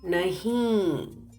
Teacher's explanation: observe that when you speak nahi, the sound should go or pass through your nose.